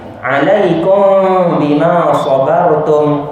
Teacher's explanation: Cara bacaan, kaedah bacaan sama sebiji macam iqlab, ya, sebiji sama macam iqlabnya, iaitu nun mati atau tanwin bertemu dengan ba, sama saja kaedah bacaan dia, dengung sebanyak 2 harakat, bibir tak rapat habis, ya, bibir tidak dirapatkan habis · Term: ikhfa syafawi